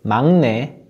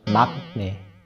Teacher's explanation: when there's a syllable ending with 기억 and the next syllable begins with 니은 or 미음, the 기억 is pronounced as 이응